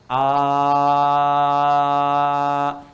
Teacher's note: Paling gampang yang Anda mengucapkan a, tidak ada sekat, udara mengalir saja, mengalir. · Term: huruf hamzah